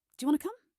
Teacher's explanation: The word to becomes part of want to, and want to becomes wanna.